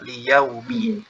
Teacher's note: Jadi jangan sampai terbaca o ya. Atau liyau. Jadi mencucu dengan sempurna.